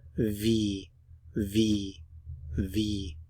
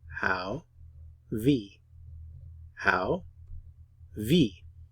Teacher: notice the pronunciation of the W it's like an English V sound